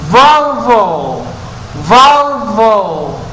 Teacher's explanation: Como si se fueran a morder el labio inferior. Y es sonoro el sonido.